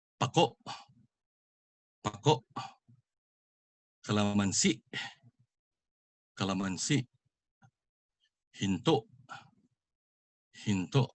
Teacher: Just like mabilis, it's pronounced fast with the accent on the last syllable. But just like malumi, it has a glottal stop as well.